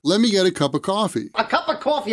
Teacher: of coffee i didn't hear of in that phrase that's because we usually pronounce of as uh the word of has two sounds there's the vowel sound uh